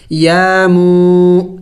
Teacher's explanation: वाव मद्दा है, मीम वाव पेश मू, इसको भी एक अलिफ का मकदार लंबा करना है